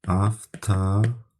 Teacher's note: burada V, F-yə çevrilir